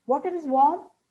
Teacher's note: Take water is warm with a falling intonation, it's a statement.